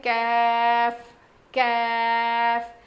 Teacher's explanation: زبان کی جڑ سے ادا ہوتا ہے